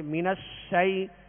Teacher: شین کی آواز جو ہے آواز منہ میں پھیل کر ادا ہوگی